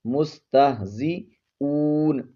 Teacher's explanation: مستہزئون میں جو ہا ہے یہ تھوڑی سی بھاری آواز میں ادا ہوگی، مستہزئون، یہاں پر واو حرف مدہ ہے، ایک الف کی مقدار کھینچیں گے۔